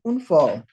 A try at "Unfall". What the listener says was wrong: Be careful with the A here. Open your mouth wide. It's fall, not fall. Look at my lips. Fall, fall. They're much wider.